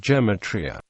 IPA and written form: ɡəˈmeɪ.tri.ə (Gematria)